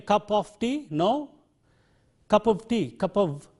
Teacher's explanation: both in the strong as well as in the weak form, there is no f sound here in this word. It is a v sound. It is not of, but it is of.